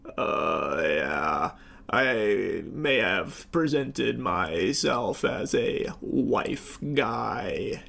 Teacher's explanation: he is putting on like an extra dollop of vocal fry